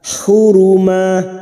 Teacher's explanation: Hati-hati membunyikan huruf ha, hu, jangan tertukar ha. Huruma, ma fathah tanwin yang dibaca waqaf selain tak marbutah namanya mat iwad, cabang dari mat tabi'i. 2 harakat kita panjangkan.